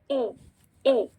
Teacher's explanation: ہمسا کہاں سے ادا کریں گے ہم, اکسل حلق سے